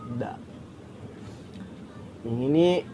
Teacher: Huruf da ini memiliki makhrajnya itu ada di ujung lidah bertemu dengan gigi seri yang atas. · Da ini memiliki sifat yaitu nafas ditahan atau jahar, suara tertahan atau syiddah, lidah di bawah atau isti'fal, terbuka antara lidah dengan langit-langit atas atau disebut juga dengan infitah.